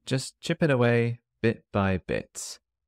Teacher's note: The letter T on just isn't there